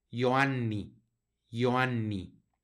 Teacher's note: una doble n que como les digo la vamos a pronunciar no la pronunciamos como si fuera una sino que hacemos un énfasis para que suenen las dos